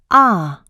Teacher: positioning the tongue in the back and low in the mouth the jaw is lowered and open the tip of the tongue is positioned behind the lower teeth